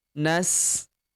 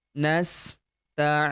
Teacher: Kita panjangkan 4 sampai 6 harokat karena di depan huruf i terdapat ya sukun sebelum huruf berhenti. Di sini huruf berhentinya huruf nu ya.